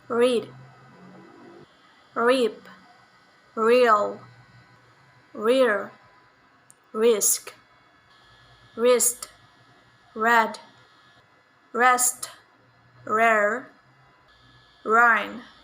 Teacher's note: voiced palato-alveolar approximant sound